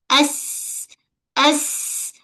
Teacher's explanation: Rabbuhu Okey, kita jelaskan bunyi desiran pada sin. Sin ujung lidah menyentuh pada belakang gigi bawah. As. Sin ni macam bunyi desiran ular.